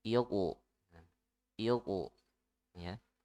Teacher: Nah, qaf itu punya sifat qalqalah ya, dipantul ya. Nah, selain dipantul, qaf juga ditebalkan ya, karena huruf tebal, maka selain dipantul juga ditebalkan ya